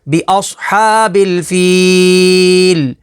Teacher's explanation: وقف تام کی وجہ سے لام کو ساکن کر دیں گے تو حروف مدہ کے بعد عارضی سکون تو مد عارض ہوگی